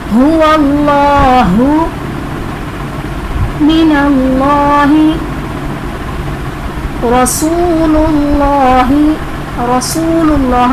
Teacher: اس میں جلالت اللہ عز و جل کے لام سے پہلے حرف پر پیش آ رہا ہے تو اس میں جلالت اللہ عز و جل کے لام کو پر پڑھیں گے